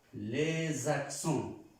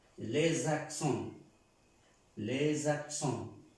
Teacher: Esta S se pronuncia como una Z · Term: liaison